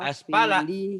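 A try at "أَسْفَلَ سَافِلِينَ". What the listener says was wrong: aspala nggak ada yang panjang.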